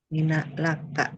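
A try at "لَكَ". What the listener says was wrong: Ya, fathahnya ya. La, la, laka. Nggak leke, laka. Lan nu'mina laka hatta. Nanti leke, la, laka, lan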